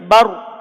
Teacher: Ini kata bar ini ada ro sukun. Sebelumnya harokatnya apa? Fathah. Maka ro-nya dibaca tebal. Ro-nya dibaca tebal.